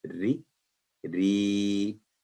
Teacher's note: را کے نیچے زیر ہے تو باریک آواز میں پڑھا جائے گا